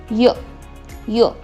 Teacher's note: जेव्हा आपण य बोलतो तेव्हा आपली जिव्हा ही टाळूला स्पर्श करते, त्यामुळे याचं उच्चारण स्थान आहे तालू.